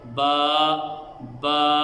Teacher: با کو ادا کرتے وقت دونوں ہونٹوں کے تری والے حصے سے یہ با ادا ہوتی ہے: با، با۔ قرآن پاک کیا ہے؟